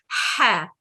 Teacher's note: ہا حلق کے درمیانی حصے سے رگڑ کھاتی ہوئی آواز ہے